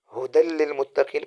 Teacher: ہدل میں غنہ نہیں ہوتا، کیونکہ جہاں بھی نون ساکن نون تنوین کے بعد لام آ جائے یا را آ جائے یا حروف ہلکی میں سے کوئی آ جائے تو وہاں غنہ نہیں ہوتا ہے۔